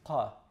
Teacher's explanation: It's just like a K, except it's further back in the mouth. The back of the tongue touches the uvula